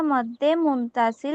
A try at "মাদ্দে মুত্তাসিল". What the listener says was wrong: মুত্তাসিল, মাদ্দে মুত্তাসিল, হ্যাঁ, মদ্দে না, মাদ্দে মুত্তাসিল। মাদ শব্দের অর্থ হচ্ছে দীর্ঘ করে টানিয়া পড়া। এখন যদি তুমি মদ বলো, তাহলে কিন্তু আমরা ওই যে অ্যালকোহল জাতীয় এই জিনিসটা বোঝাবে। হ্যাঁ, বলতে হবে মাদ, মাদ্দে মুত্তাসিল।